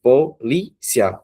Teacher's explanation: Cia é a última, vai, fica assim, polícia. O li é a penúltima, então ela é mais forte. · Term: paroxítono